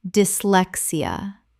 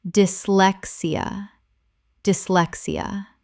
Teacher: The Y in dis makes a short I sound. Four syllables.